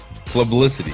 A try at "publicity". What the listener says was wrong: No, there's no L before the fucking B. Pub.